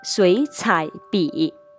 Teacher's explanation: 前两个字成词的口诀是223